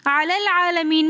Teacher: ہم لام کو دوسرے لام کے ساتھ ملا کر پڑھیں گے، حمزۃ الوصل درمیانے کلام میں آنے کی وجہ سے گر جائے گا